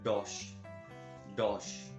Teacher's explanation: the d in spanish is softer than of english it's very soft it's produced with the top of the tongue not with the tip of the tongue top of the turn against the gum ridge not with the